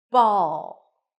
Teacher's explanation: The dark L is somewhere between an L an r and a w